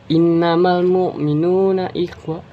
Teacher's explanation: Pada kata inna terdapat hukum gunnah, yaitu karena terdapat huruf nun bertasydid. Cara bacanya cukup dibaca dengan ditekan dan ditahan sesaat selama 2 harokat.